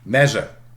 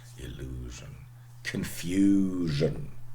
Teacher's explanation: the voiced palatal fricative okay again words of french origin it's not a native sound of germanic languages very much